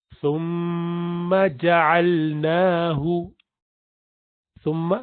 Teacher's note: زبان کی نوک کو آگے کے جو دانت ہیں ثنایا علیہ ان کو کہتے ہیں اوپر والے, اس کے کنارے پر لگائیں گے, اور میم پر شد ہے تو اس لیے اس کو غنہ کریں گے.